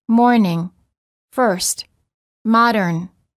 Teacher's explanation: the r before a consonant is also always pronounced in American English but generally not pronounced in British English